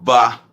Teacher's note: o B de banana é bilabial